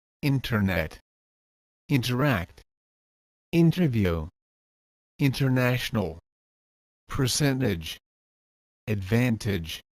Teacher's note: If N is before the T, then the T goes silent.